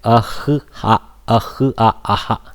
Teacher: And southern people, what they do, they pronounce the h of the visarga and continue the akara little bit after that visarga